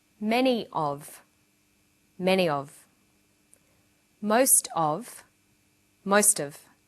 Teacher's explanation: notice that of in these phrases is unstressed